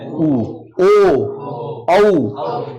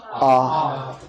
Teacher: इन तीनों के बोलने में मुंह गोल हो गया, तो ये व्रतमुखी है।